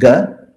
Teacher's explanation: If you do a soft unaspirated coming from the throat, it's ga.